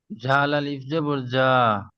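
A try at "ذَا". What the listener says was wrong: জাল পড়বেন না জি, হালকা, জাল আলিফ জবর জা। জি, আলিফের ডান দিকে জবর এসছে তাকে আলিফ মাদ্দা হলে আলিফ মাদ্দা এক আলিফ পরিমাণ টান দিয়ে পড়তে হবে। মনে রাখতে হবে আলিফের ডান দিকে জবর থাকলে তাকে আলিফ মাদ্দা বলে।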